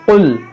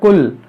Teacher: یہاں پر نقطے والا قاف ہے, حروف مشتعلیہ ہے, تو اس کو موٹا پڑھیں گے